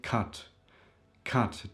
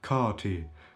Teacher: the vowel is a bit more elongated, stressed and much longer almost sounding like an O sound